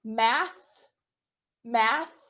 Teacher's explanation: a word they will make an unvoiced sound so math math that th is unvoiced your vocal cords don't move